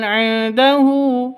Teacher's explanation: nun mati bertemu dengan ain jelas terang karena bacaan izhar halqi. Nun nun matinya jelas ainnya jel jelas tidak boleh panjang.